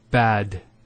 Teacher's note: Notice the elongation of the A sound. We don't say bad, we say bad.